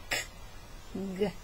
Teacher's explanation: the scrapers where the sound scrapes from the back of your throat